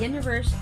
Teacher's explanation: universe is on the first syllable